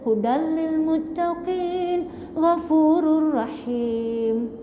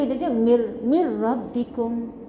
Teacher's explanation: Tak boleh dengung kan? Masukkan 100%. Hilangkan bunyi nun. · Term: idgham